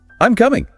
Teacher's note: Voice falls signals completion. Certainty.